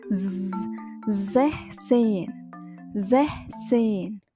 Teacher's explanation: S yang bersuara dan bervibrasi